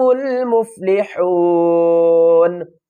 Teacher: وقف کی صورت میں نون کو ساکن پڑھیں گے